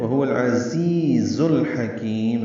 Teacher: زا تیز صفیر کی آواز سے ادا کرتے ہیں، وہو العزیز الحکیم، زی یا مدہ ہے، پھر زا کو لام سے ملانا ہے، ہا وسط حلق سے ادا کرنا ہے، کاف باریک پڑھیں گے، نرمی سے ادا ہوگا کاف اور لمبا کریں گے اس کو، میم ساکن پہ اظہار ہوگا.